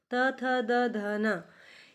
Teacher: त थ द ध न, ये सारे व्यंजन दांत को स्पर्श करके बोले जाते हैं, इसलिए इनको दंत्य व्यंजन भी कहा जाता है।